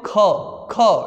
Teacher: ख ज्यादा वायु बाहर निकल रही है ना तो ये महाप्राण होगा ग बोलो ग घ बोलो घ देखो ढेर सारा वायु बाहर